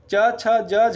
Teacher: च छ ज झ जो है तालब व्यंजन है